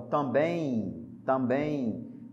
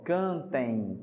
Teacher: Você tem justamente a nasalização, né? E esse M vai virar um I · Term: ditongo decrescente nasal